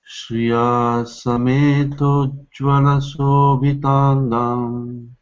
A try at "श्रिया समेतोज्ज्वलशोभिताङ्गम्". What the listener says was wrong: शोभिताङ्गम् no long vowel विष्णुं सदाहं शरणं प्रपद्ये